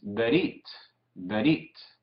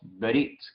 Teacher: Recuerden que dijimos que a veces casi no decimos el Shewa, muy rápido, apurada la pronunciación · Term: Shewa sencillo